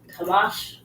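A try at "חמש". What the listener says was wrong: Kamash, well done.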